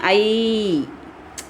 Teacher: ஏன்னா சவுண்டு பாருங்களேன், ஐ முடியும் போது ஈ சவுண்டு வரும்